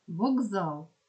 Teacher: глухі приголосні перед дзвінкими дзвінчуються тобто стають дзвінкими